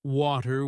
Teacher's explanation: In American English, people might say water with a D sound, while in British English it's often way too with a T sound.